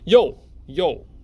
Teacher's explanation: It's a fourth tone going down.